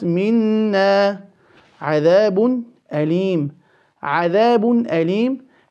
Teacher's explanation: The noon, we have placed ghunna on it. Now the alif maddiya will only be two vowel counts.